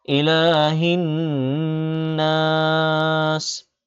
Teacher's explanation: ইলাহিন, ইলা লামে একালিপ টান হবে, ইলাহিন নাস। নুনে তাসদিদ গুন্না করতে হবে, সাথে সাথে একালিপ টানও দিতে হবে।